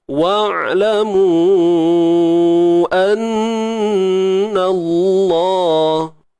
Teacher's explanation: Nun bersabdu wajibul ghunnah. Wajib kita dengung kadar 2 harakat.